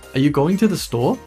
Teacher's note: Question. Rising intonation at the end of the sentence.